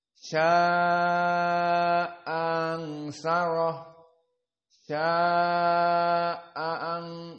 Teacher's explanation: Hamzah yang kedua dari ansyarah tidak dibaca dengan tahqiq. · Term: tashil